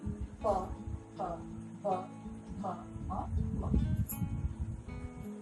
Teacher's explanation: प वर्ग में दोनों ओठ हमारे मिल जाते हैं